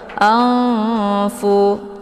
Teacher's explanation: Jadi karena makharijul huruf nun dengan fa itu tidak begitu jauh, juga tidak begitu dekat. Jadi cara bacanya, nunnya disamarkan, siap-siap masuk ke huruf fa. Anfu. Jadi ikhfa awsat ini kalau dibandingkan tingkat kesamaran dan dengungan itu seimbang atau setara, ya.